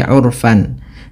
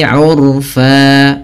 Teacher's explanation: ketika kita berada di akhir bacaan, ini kita baca dengan bacaan mad iwad, yaitu mengganti fathatain menjadi panjang.